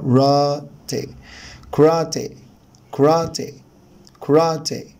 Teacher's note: الاسترس حبايبي على المقطع الثاني من الكلمه